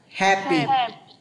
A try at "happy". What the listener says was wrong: Em đọc âm P cho anh rõ ràng hơn một chút nữa này.